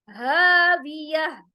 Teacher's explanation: हा हुरूफे हलकी है, डीप थ्रोट से अदा होगा। ह अलिफ मद्दा के साथ।